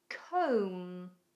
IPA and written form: kəum (Comb)